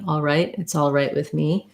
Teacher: typically we wouldn't um pronounce that t with a lot we wouldn't release it would just be a stop t